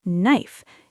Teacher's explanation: if you listen first, you hear that the K is silent. You hear knife.